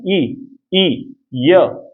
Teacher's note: जैसे ई बोलते ना, ई, य, तो जीभ का पिछला हिस्सा थोड़ा ऊपर उठेगा और हवा जो है तालु और जीभ में से निकलेगी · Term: तालव्य